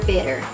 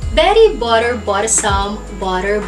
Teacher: change the T sounds in between 2 vowels into the D sound because it is a flap T sound